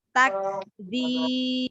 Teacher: Baru hamesnya ya, karena kaf memiliki sifat hames. Takdzib.